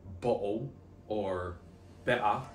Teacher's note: There's a glottal stop where the T is.